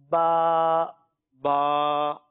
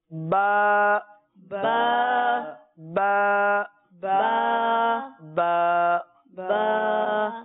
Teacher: تو با کے اوپر مد نہیں ہے لہٰذا اس کو 1 الف تک کھینچیں گے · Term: 1 الف کی مقدار